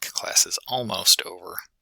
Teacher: the rise fall intonation where stress is placed on the most focused word and after that the pitch drops in the sentence